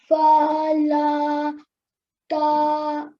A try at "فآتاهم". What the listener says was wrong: So fa doesn't have lam with it, it has alif with it. So fa'atahumu.